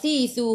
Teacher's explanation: hujung lidah keluar pada gigi depan. Tengok cermin, kalau tak confident keluar tak lidah, tengok cermin.